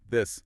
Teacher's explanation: Yeah, I feel a definite vibration buzzing.